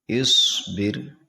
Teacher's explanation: حمزہ صاد زیر اس، با را زیر بر، اس بر. اس بر میں صاد موٹا ہوگا کیونکہ یہ حروف مستعلیہ میں سے ہے